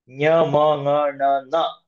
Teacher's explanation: ನ್ಯ ಗೆ ತಾಲು ಮ ಗೆ ಓಷ್ಟ ನ ಗೆ ಕಂಠ ನ ಗೆ ಮೂರ್ಧ ನ ಗೆ ದಂತ ಇದೆ ಅದರ ಜೊತೆಗೆ ನಾಸಿಕನು ಬೇಕು ನಾಸಿಕ ಅಂದ್ರೆ ನೋಸ್ ಏದೈತೋಹೋ ಕಂಠ ತಾಲು ಎ ಮತ್ತೆ ಐ ಏತ್ ಐತ್